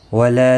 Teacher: لا الف مدہ ہے، ایک الف کی مقدار کے برابر کھینچ کر پڑھیں گے